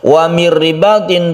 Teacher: nun mati bertemu dengan ra, ini tidak dengung. Ini adalah idgham bila gunnah.